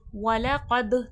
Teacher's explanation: दाल में खलखले की सिफात वाज़े होगी, आवाज़ पलट कर सुनाई देगी